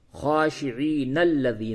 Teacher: اگر آیت نمبر 45 کو 46 سے ملا کر کے پڑھیں گے تو خاشعین الذین، نون کو لام سے ملائیں گے